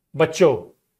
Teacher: Again, you can see that the nasalization is dropped.